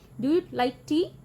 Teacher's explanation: ਬੋਲਦੇ ਹੋਏ ਆਵਾਜ਼ ਐਂਡ ਵਿੱਚ ਉੱਪਰ ਜਾਂਦੀ ਹੈ, ਟੀ ਤੇ ਐਮਫੈਸਿਸ ਆਉਂਦਾ ਹੈ। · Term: ਰਾਈਜ਼ਿੰਗ ਇੰਟੋਨੇਸ਼ਨ